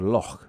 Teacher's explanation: The technical term for this sound is a voiceless vela fricative and it's that kind of hawking up sound made at the back of the throat. The huck sound.